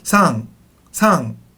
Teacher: It is an N, but it's kind of in the back of your throat. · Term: Japanese N sound